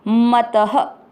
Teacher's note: चौथा चरण स में अ मिक्स करेंगे स, योगी, गी की मात्रा बड़ी, पर दोनों अक्षर पूरी, दोनों में अ मिक्स करना है परमो, म और त दोनों अक्षर पूरी, दोनों में अ मिक्स करना है मत, त में अ की मात्रा तो विसर्ग को पढ़ना है ह, मतः। चौथा चरण फिर से स योगी परमो मतः।